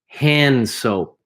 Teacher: The D is almost silent. You can barely hear it. · There's no A between hand and soap.